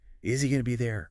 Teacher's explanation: The Z sound at the end of is connects to the H, or really the vowel sound in he, which often drops the H sound when unstressed. So easy, easy, And going to becomes gonna. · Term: linking reduction